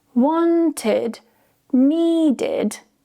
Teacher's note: So, we're not saying wanted, needed. It's not an eh, it's a miserable i sound.